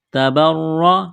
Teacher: را کو موٹا کرنا ہے زبر کی وجہ سے ، را کے اوپر تشدید ہے، را کو دبانا ہے، تبرّأ